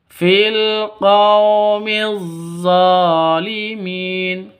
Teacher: zo panjangnya dua ketukan karena ada alif yang didahului fathah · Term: Mad Asli